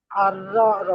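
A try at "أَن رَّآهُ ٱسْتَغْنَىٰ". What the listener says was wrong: আর র আ, টান হবে। আর র আ হুস্তাগনা।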